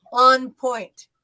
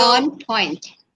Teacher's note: we'll make an emphasis on that on the first word